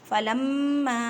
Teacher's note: فلما یہاں پہ الف مدہ کا قاعدہ بھی کریں اور چھوٹی مد ہے، تین الف کی مقدار میں کھینچ کر پڑھیں